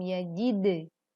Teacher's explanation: qalqalahkan atau pantulkan huruf dal sukun dengan jelas.